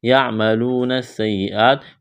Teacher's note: سین اور یا میں سختی کریں گے، دباؤ اور جماؤ کے ساتھ پڑھنا ہے · واو مدہ ہے، الف کے برابر کھینچنا ہے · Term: تشدید